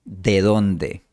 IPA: de 'ðon.de